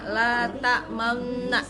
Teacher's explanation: Ismam itu artinya menggabungkan dua bibir seperti mengucapkan wawu ketika membaca la ta'manna.